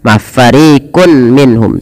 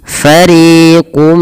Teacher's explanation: Nah, masukkan nunnya kepada huruf mim atau tanwinnya masuk kepada huruf mim dan diganti bunyi suara mim. Jangan lagi fariqun minhum, tapi langsung mengasuk kepada mim. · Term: idgham bi gunnah